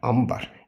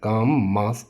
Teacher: Söz ortasında N-dan sonra B və M hərfləri gələrsə, N, M kimi deyirlər.